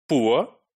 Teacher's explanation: the starting sound is ooh and the ending sound is the central schwa sound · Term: centering diphthong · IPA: ʊə